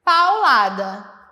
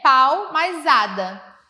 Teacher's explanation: Existe uma consoante de ligação entre pau e ada, que é esse L.